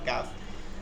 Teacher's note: 5 নম্বর মাখরাজ জিব্বার গোড়া থেকে একটু আগে বাড়িয়ে তার বরাবর উপরে তালুর সঙ্গে লাগায় মধ্যখান পেঁচানো কাফ।